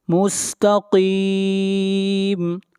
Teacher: قاف کو موٹا پڑھیں گے، قاف حروف مستعلیہ میں سے ہے